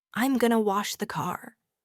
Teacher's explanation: That going to collapses into gonna, giving the sentence a completely different attitude, a completely different mood and rhythm.